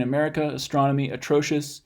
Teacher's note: when we get a schwa like in America astronomy atrocious the first a is just in a syllable all by itself and what that means that it's forming the nucleus of that